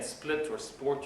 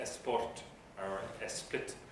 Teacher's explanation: one way is to put a vowel in front of the s so instead of saying split or sport you say something like